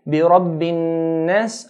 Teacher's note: there's a nasalization, a sound from the nasal passage automatically comes with these 2 letters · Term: ghunna